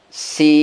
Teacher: Ketukannya sama. Sin, bunyi N ditahan sampai ketukan sukun sempurna.